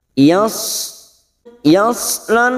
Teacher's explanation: jangan langsung ditebalkan ada huruf ya tipis Shad tebal